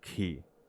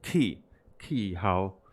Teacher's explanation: the third tone, ki, this small falling tone, changes to the second tone